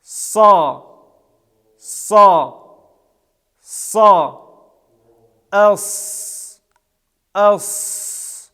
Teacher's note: звук щелевой глухой произносится без участия голоса это им фактическое согласно произносится с напряжением органов речи и подъемом задней части спинки языка · этот звук щелевой глухой произносится без участия голоса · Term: Буква Садун